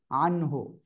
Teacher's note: এই যে নুন সেকিনের পরে ইজহারের অক্ষর হা আসছে, স্পষ্ট করে পড়তে হবে।